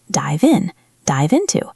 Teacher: ends with a V sound. This is a vibrating sound. V. It links to the I.